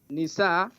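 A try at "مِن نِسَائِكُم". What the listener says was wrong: You skip. You said min. Not nisa. Min nisaikum.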